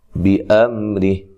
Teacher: میم ساکن کو ہلانا نہیں ہے، را کو باریک پڑھنا ہے، تو وقف کی صورت میں یہ جو ہا ہے یہ ساکن ہو جائے گی۔